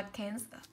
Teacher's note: Cancer thì cô sẽ có âm đầu tiên của cô là e bẹt, âm thứ hai của cô là âm ơ